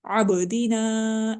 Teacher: عبدینا با پھر قلقلہ حروف میں سے ہے، ساکن ہو رہی ہے، اس لیے ہم اس کو قلقلہ کے ساتھ پڑھ رہے ہیں. عین کو حلقہ کے درمیان والے حصے سے پڑھیں گے، ہلکی لیٹر ہے.